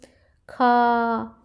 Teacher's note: महाप्राण व्यंजनों के उच्चारण में हकार जैसी ध्वनि विशेष रूप से रहती है और श्वास जो है अधिक मात्रा में निकलती है। जैसे अगर हम खा बोलते हैं, जैसे खा, तो खा में जो है श्वास अधिक मात्रा में निकल रही है।